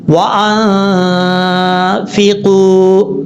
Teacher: غنہ کبھی بھی لمبا نہیں ہوتا، لیکن آپ نے اس پہ دیر کرنی ہے ایک الف کی مقدار، · اوپر والے جو دو دانت ہیں ان دونوں دانتوں کا نیچے والا جو حصہ ہے، یعنی نیچے والا کنارہ نیچے والے ہونٹ کی تری والی جگہ پر لگانا ہے۔ اوپر والے دانتوں کا کنارہ نیچے والے ہونٹ کی تری والی جگہ پہ لگانا ہے، تو یہ فا پڑھا جائے گا۔ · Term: نون ساکن کا اخفا, فا کا مخرج